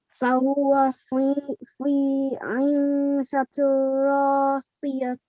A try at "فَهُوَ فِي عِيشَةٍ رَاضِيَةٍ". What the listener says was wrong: At the end, we're not going to pronounce this the. Okay, we're going to pronounce this as a ha sakin. Inshallah, you will learn more about this when we come to the lesson of looking at pausing rules and stopping rules.